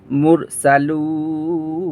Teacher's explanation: লুন তিন আলিফ টানে পড়তে হবে।